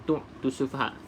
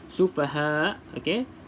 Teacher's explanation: hamzah ni pastikan bunyi hamzah lah. Okey, dia tak bunyi ain.